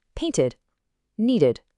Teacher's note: This is the only time you actually say a full ed sound that adds a whole extra syllable. It happens when the base verb already ends in a T or a D sound, and it makes sense, right?